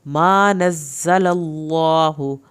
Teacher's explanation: زا کو سختی کے ساتھ پڑھیں، زا کی شد بھی پڑھیں. للہ، اللہ کے نام کو پر کرنا ہے، منہ بھر کے پڑھیں گے تو اللہ کا نام صحیح پر پڑھا جائے گا.